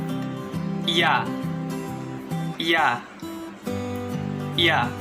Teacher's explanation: konsonan lamino-palatal paduan bersuara